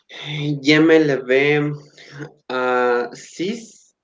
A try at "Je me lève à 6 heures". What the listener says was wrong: Lève. Acuérdate que la E no suena si no tiene acento. Heure. Heure.